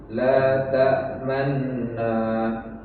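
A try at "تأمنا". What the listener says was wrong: Enggak. Jadi terdengar u-nya. Nu-nya terdengar tapi cepat. Kalau normal kan begini. La ta'manuna. Itu kan normal ya kan? La ta'manuna. Ini cepat, nu-nya cepat. La ta'manna.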